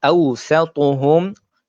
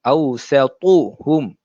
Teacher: Nah, bacaan tu salah sebab dia adalah huruf mad lin. Awsatuhum, sa huruf yang nipis, ta huruf yang tebal.